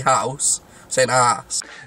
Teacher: with a bit of H dropping what the rest of us call the house can end up sounding quite confusing